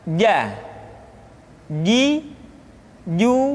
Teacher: dikeluarkan dengan menyentuhkan tengah-tengah lidah dengan langit-langit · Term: huruf j